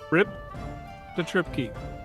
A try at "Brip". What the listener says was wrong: Brip. Not rip, but brip. With a B.